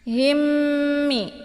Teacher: ditekan hanya kemudian ditahan suaranya dua harakat masuk ke dalam mim yang kedua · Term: Idgham Mimi